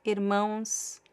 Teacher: You just add the consonant. It does not change the nasal sound. It continues to be the same.